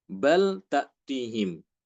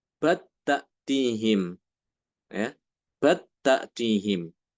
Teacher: Lamnya dibaca dengan idhar atau jelas. Di sini Imam Hisham dia membaca dengan idgham.